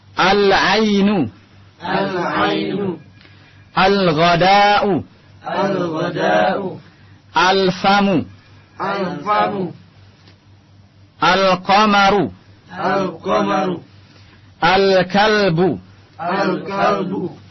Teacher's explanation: albabu aljannatu aljannatu alhimaru alhimaru alubzu Al Antum lihat di sini Alif lamnya jelas terlihat lamnya tidak masuk ke dalam huruf setelahnya tapi dibaca jelas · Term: Al huruf alqamariyah